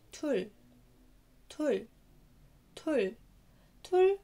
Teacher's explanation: رقم اتنين tul tul tul tul، عبارة عن consonant vowel consonant tul tul. واتفقنا ان حرف الرا لما بيجي في الباتيم بينطق لا، يعني كأنه لام